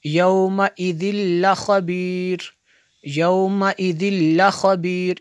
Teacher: तनवीन के बाद लाम उरूफ़े यरमलून में से है तो इसलिए यहाँ पे जो है इदगाम होगा, यहाँ पे गुन्ना नहीं करेंगे।